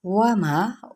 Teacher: वाव होंठों की ना तमाम गुलाई के साथ